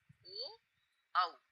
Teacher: ओ औ यह दोनों स्वर कंठ और ओष्ठ दोनों से उच्चारित होते हैं। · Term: कंठ ओष्ठ, कंठोष्ठ